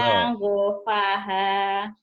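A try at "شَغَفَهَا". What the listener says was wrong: Gak ada yang panjang, ujungnya doang yang panjangnya, Bu. Syanggofaha.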